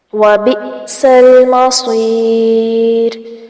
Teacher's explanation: وَبِئْسَ حمزہ ساکن ہے، اس وجہ سے جھٹکا آئے گا، لام ساکن کو نہیں ہلانا. مصیر صاد کو پر کریں گے